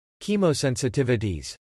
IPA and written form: kɛmowsɛnsətɪvətiz (Chemosensitivities)